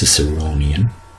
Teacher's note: the stress is on the third syllable so it's ciceronian